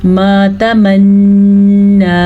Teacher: नून पे शद है, खड़ी ज़बर भी है, मद शद भी, गुन्ना भी अदा करेंगे और नून के ऊपर खड़ी ज़बर की वजह से लंबा भी करके पढ़ेंगे।